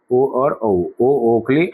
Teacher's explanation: ओ ध्वनि कंठ से निकल रही है, एक्शन में होंठ आ रहा है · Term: कंठोष्टम